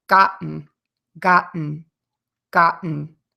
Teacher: you're going to stop the air in your throat